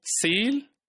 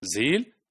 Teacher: S is voiceless and z is voice. They are articulated from alveolar ridge and they are fricatives.